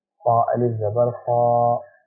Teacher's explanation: الف پر زبر ہے، الف سے پہلے جو لفظ خا ہے اس پر زبر ہے تو یہ مد کی تختی کا لفظ کہلائے گا اور اسے کھینچ کے ادا کیا جائے گا